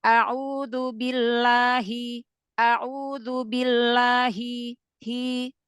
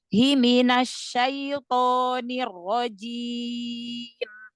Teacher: huruf H itu karena dia makhratnya paling jauh e di tenggorokan bagian bagian bawah